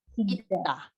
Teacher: Double S. But it make the sounds of D.